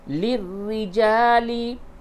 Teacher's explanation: را کے نیچے زیر ہے، اس کو باریک پڑھیں گے